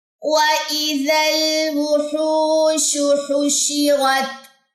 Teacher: ہا کی جو پیش ہے وہ لمبی ہوگی، کیونکہ آگے واؤ خالی آ رہا ہے اور یہ دونوں مل کے جو ہے وہ واؤ مدہ کا جو رول ہے وہ بناتے ہیں، اور 2 سیکنڈ کے لیے ہو لمبا ہو جائے گا. · شین کی پیش لمبی نہیں ہوگی اور ہا کی پیش لمبی نہیں ہوگی، شین کی زیر لمبی نہیں کرنی.